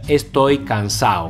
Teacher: También es bastante normal en la lengua coloquial no pronunciar esta D.